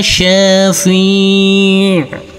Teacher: Huruf fa di sini boleh kita baca dengan panjang 2, 4 maupun 6 harokat. Karena kita wakafkan di sini, maka harus ada aliran untuk huruf ain, berbeda dengan huruf hamzah.